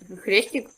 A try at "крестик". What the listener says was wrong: Не хрестик, а крестик.